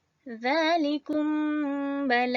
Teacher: hukum Ikhfa Syafawi berlaku apabila mim mati bertemu ba bacaannya perlu dengung